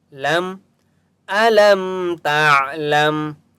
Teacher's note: عین کی آواز حلق سے نکالیں گے، اور عین کے اوپر سکون ہے تا کو بھی عین کے ساتھ ملائیں گے۔